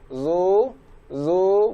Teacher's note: Di sini huruf za berharokat dhammah dimulai dari rahang tebal. Zu, zu, baru mundur.